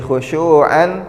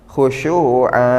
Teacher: ketika tanwin fathah di akhir ayat atau diwaqafkan menjadi dua harokat